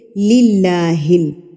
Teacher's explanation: اللہ سے پہلے زیر ہے، لام کے نیچے زیر ہے، تو ہم اس اللہ کے لفظ کو باریک پڑھیں گے